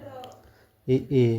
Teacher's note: इ ए इसका उच्चारण तालव्य यानी तालु से होता है। यह घोष है और अल्पप्राण।